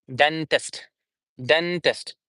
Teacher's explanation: Then stress would be on duh. The primary stress will be on duh.